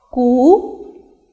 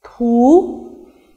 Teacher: Ku is an unaspirated sound and thu is an aspirated sound.